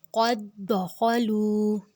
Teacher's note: دال کو ہم نے نرمی سے ادا کرنا ہے، نرم حروف ہے، بغیر سٹی کے ادا کرنا ہے، لیکن جو اس کے جزم والا دال ہے وہ ڈیڈ ہو جائے گا، اس کو ہم نے نہیں پڑھنا۔